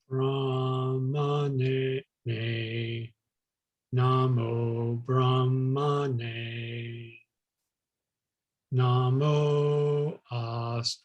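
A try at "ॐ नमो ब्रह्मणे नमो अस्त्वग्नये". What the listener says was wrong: In astvagnaye, ast is in the middle. You went down.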